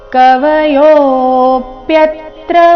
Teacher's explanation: ಯೋ ದೀರ್ಘ ಬಂದು ಅವಗ್ರಹ ಇದ್ದ ಕಾರಣ ದೀರ್ಘ ಹೇಳ್ಬೇಕು ಸೌಮ್ಯ ಆಘಾತ ಮುಂದೆ ಪ್ಯ ಸಂಯುಕ್ತ ಅಕ್ಷರ ಬಂದ ಕಾರಣ ಯ ಮೇಲೆ ಸಹ